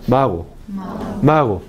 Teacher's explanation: español en caso de la consonante fricativa que existe en español No hay contacto entre el velo de paladar y el postorso de la lengua